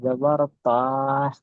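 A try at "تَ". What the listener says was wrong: ত খাড়া জাবার তা নয়, ত খাড়া জাবার ত।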